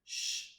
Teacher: sh use the palato alveolar region of the mouth